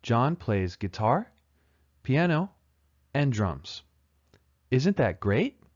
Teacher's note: guitar has rising intonation so does piano but drums has falling intonation and then the word great also uses rising intonation guitar piano · Guitar, piano, and drums is a list. The items in the list have rising intonation until the final item. The final item uses falling intonation.